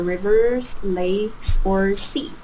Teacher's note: the intonation up up down on the last one · notice the rising intonation, rivers, lakes, or sea, and then falling on the last item